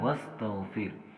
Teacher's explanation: اور اس کے بعد را دیکھیں، را یہاں پر باریک پڑھا جائے گا، اس لیے کہ را ساکن ہے اور اس سے اپنے پہلے والے لفظ کے نیچے حرکت ہے، تو اس لیے را یہاں پر باریک پڑھا جائے گا۔